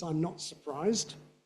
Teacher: It's typically going to have two stresses, one on not, because it's negative, one on surprised, because it's a content word. Not one on I'm, yes, because that's a contraction of a pronoun and the copula.